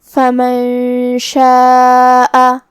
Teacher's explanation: پھر حرف شین ہے کلمت شاء میں. شین بھی حروف الاخفاء میں سے ہے تو ہمیں یہ حکم کو غنہ کے ساتھ ادا کرنا ہے